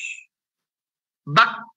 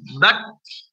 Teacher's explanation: Aslinya huruf kaf itu suaranya terputus. Bak. Nah, aslinya seperti itu dia. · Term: syiddah